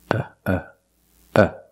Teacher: it's not stressed you can call it a schwa but it's the same sound as uh in cup and up